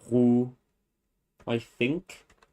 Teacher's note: like a velar, voiced velar fricative in a low tone.